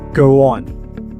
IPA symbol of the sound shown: w